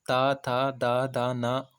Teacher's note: ये दंत से बोले जाते हैं